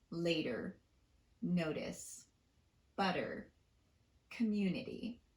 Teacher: the tapped T occurs between vowel sounds